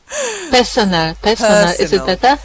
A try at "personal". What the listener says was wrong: Yeah, not personnel. Personal. It's the ul at the end.